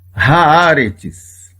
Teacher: A primeira sílaba nós temos uma consoante e uma vogal, então é uma sílaba aberta, é uma vogal longa. Aqui é um A, é o câmetes.